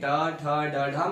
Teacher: टा वर्ग पूरा पूरा मूर्धा से बोला जाता था